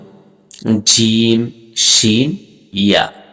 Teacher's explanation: জিহ্বার মধ্যখান তার বরাবর উপরের তালুর সঙ্গে লাগাইয়া 3টি হরফ উচ্চারিত হয় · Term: 6 নম্বর মাখরাজ